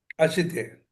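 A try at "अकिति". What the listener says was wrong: అకితి. అశితి కాదు, అకితి.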